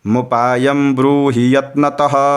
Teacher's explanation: म में है ह्रस्व और ब जो है ब्रूहि, ब्रू में क्या है, दीर्घ है, तो उच्चारण भी आप देखिएगा तो थोड़ा सा अंतर हो जा रहा है, मुपायम ब्रूहि यत्नतः।